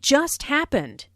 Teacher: notice the stress on just which emphasizes that the accident happened very very recently